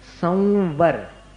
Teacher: म जैसा उच्चारण नहीं है वो ऊपर के दांत और नीचे के होठ को मिलाकर अपन उच्चारित करें, संवर। व में मिलाना पड़ता है अनुस्वार का उच्चारण।